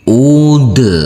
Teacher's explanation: huruf Dal yang bersukun ini harus kita pantulkan karena ini adalah bacaan Qalqalah